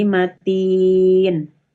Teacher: Dibaca wakof pada huruf yang bersukun arid karena berhenti atau disukunkan maka menjadi panjang. Panjangnya yang asalnya 2 harokat menjadi 2, 4 sampai 6 ya. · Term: Mad arid li sukun